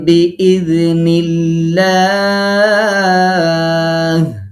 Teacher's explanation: যদি দেখা যায় যে মিম সাকিনের পরে একটা বা হরফ আসছে, তখন সেই মিম সাকিনটাকে গুন্না করে পড়তে হবে, কিছুটা গোপন করে পড়তে হবে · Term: মিম সাকিনের ইখফা